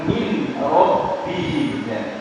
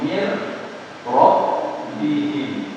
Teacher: Di sini tidak jelas suaranya ya. Suara nun sukun sama tanwinnya kalau di idgham bila ghunna tidak jelas.